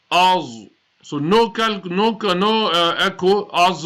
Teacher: letter za is a musta'liya letter, full mouth